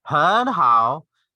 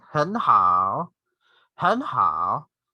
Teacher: The first word, the first syllable is in the second tone or the rising tone.